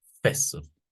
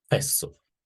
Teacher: se pronuncia de manera enfática duplicando el sonido s siempre y cuando esta esta forma partir inherente de la palabra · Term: doble S